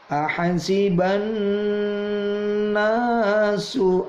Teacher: Itu seperti yang sudah kita bahas, namanya bacaan gunnah. Nun ditahan, udaranya tidak keluar melalui mulut tetapi melalui hidung. Ahasiban nasu, na itu mad tabi'i, ada harokat fathah, ketemu alif, dibaca 2 ketuk.